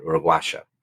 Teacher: the double L is a sh sound instead of a Y sound in Uruguay